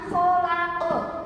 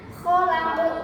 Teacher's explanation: Ini bacaannya aslinya khalaqo, tapi ketika dibaca di akhir ayat menjadinya khalaq. Qof-nya yang asalnya berharakat fathah, dibacanya berharakat sukun. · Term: qalqalah kubra